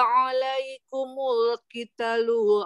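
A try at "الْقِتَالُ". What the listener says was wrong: Qitalu ta dua harokat.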